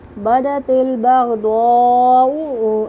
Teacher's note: दाल जो है हरूफ कलकला में से इसकी आवाज़ पलट के आएगी